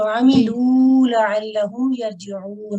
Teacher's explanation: آ کو لمبا نہیں کرنا. عملو حرکات مختصرہ ہے عین کے اوپر